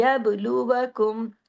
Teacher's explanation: यब बा पे कलकला, बा साकिन है, सुकून में है।